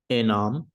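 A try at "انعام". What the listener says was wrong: En'am, exactly.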